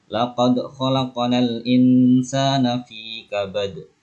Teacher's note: fi kabad itu qalqalah kubra. · Yang pertama laqad itu dal sukun, qalqalah sughra.